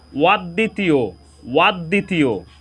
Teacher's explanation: এখানে প্রথম শব্দে দ এর সাথে ব ফলা সংযুক্ত হওয়ার কারণে এখানে দ এর উচ্চারণ দুইবার হয়েছে